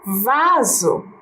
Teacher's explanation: Porque ela não tem o som do S forte Ela tem o som do Z